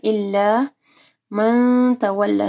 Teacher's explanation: نون ساکن کے بعد تا ہے، اخفا غنہ ہوگا۔ تولا یہ کھڑی زبر ہے تو اس کو پڑھنا ہے۔